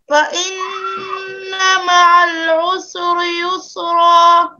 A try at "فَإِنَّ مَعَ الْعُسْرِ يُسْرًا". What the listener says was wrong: سین کو ساکن پڑھے، سین کو حرکت مت دو، جھٹکا قلقلہ. مثلا فإن مع العسر يسرا إن مع العسر يسرا